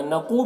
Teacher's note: نقو میں قاف کو پر پڑھیں گے، حروف مستعلیہ میں سے ہے اور واو مدہ ہے، ایک الف کے برابر کھینچیں گے۔